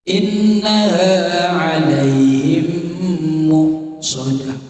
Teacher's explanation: Itu tidak boleh dibaca inna alaihim muqsadah. Jadi mimnya itu harus berhenti sebentar. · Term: idgham mislain